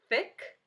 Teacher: I hear the sound at the beginning of that words but it's unvoiced